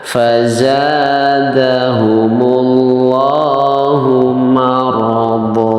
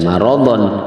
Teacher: tanwinnya atau di situ adalah dihilangkan, ya, tapi huruf do-nya tetap dibaca dua harokat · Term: mad iwad